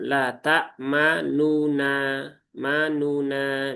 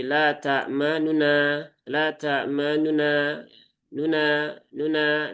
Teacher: Nah, kalau ikhtilas maka nunnya itu dia kurang dari satu harokat.